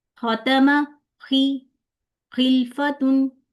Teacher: जैसे अक्सर आ जाती है खिड़की वाली जैसे होती है ना ख वो वाली नहीं करनी खर खर वाली साउंड होनी चाहिए खड़खड़ वाली नहीं होनी चाहिए तो इन दोनों हरूफ को मोटा करना है और मोटा करते हुए जब आप जबान की जड़ को ऊपर तालू की तरफ उठाएंगे तो आपका ख निकलेगा